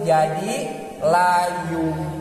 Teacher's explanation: kunaon jadi layum pedah nunna ditukeurkeun kana mim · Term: iklab